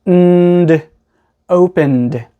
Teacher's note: Because n is a voiced sound, we go right from the n sound to the d sound.